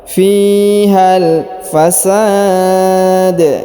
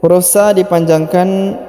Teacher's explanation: Huruf sa dipanjangkan boleh 2, boleh 4, boleh 6 harokat karena di depan huruf sa terdapat alif sebelum huruf pemberhentian, dan huruf pemberhentian huruf da disukunkan dan dipantulkan ya